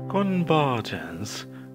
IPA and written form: kənˈvɜː(r)dʒ(ə)ns (Convergence)